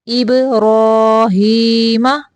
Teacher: اب با کو قلقلہ کریں گے